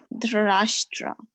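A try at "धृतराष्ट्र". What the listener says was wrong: Yeah, Dhritarashtra. I is coming because there's a dot underneath the R. Yeah, that's the re in the rishi, like that.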